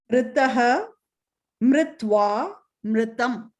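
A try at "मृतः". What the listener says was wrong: Why you inserted a va in between? So Mritva means it's something else. It is likely some other word. So Mritaha is dead.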